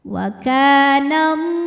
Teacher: karena ada huruf lam dengan baris fathah panjang cara bacanya panjang lamnya dua harakat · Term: matabi'i muqaddar